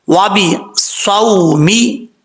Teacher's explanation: زبان بالکل ٹچ نہ کرے، یعنی لگے نہ، تھوڑا سا پیچھے کی طرف ہو تو یہ صاد پڑھا جاتا ہے، یعنی اتنی جگہ ہو کہ وہاں سے سیٹی کی آواز نکل سکے، تو یہ صاد سیٹی کے ساتھ پڑھا جاتا ہے کیونکہ حروف صفیریہ میں سے ہے۔